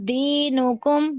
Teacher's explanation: اخفا نہیں ہوگا یہاں پر، بغیر غنہ کے آپ پڑھیں گے